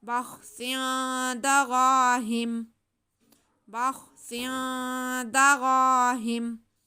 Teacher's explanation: मीम को साकिन कर देंगे तो वक्फ हो जाएगा।